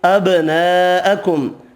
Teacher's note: با ساکن پر قلقلہ کریں گے